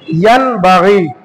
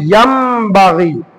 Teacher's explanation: ইকলাবের হরফ একটি বা, নুন সাকিন বা তানবিনের পরে যদি বা হরফটি আসে তাহলে নুন সাকিন বা তানবিনটাকে মিম দ্বারা পরিবর্তন করে পড়তে হবে। এই জন্য ইয়ান বাগি কে পড়তে হবে ইয়াম বাগি।